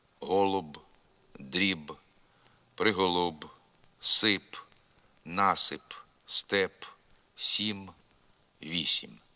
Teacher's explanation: губні приголосні б п в м ф в українській мові майже завжди тверді Вони ніколи не м'якшаться на кінці слова